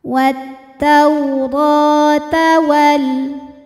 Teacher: Ra dihukumi dengan mad tabi'i muqaddar, sebab ra berharokat fathah berdiri. Cara bacanya, ra panjang 2 harokat.